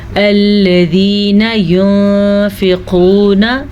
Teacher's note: قاف کو ہم پر پڑھیں گے کیونکہ قاف ہمیشہ ہی موٹی پڑھی جاتی ہے